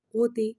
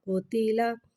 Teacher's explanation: قوف کو ایک الف یعنی 3 مقدار کھینچ کے پڑھیں گے. قوف حرف مستعلیہ ہے لہٰذا اس کی آواز حلق سے موٹی ادا ہوئے گی. قوف کے اوپر پیش ہے سے ہونٹوں کو گول کر کے ادا کریں گے.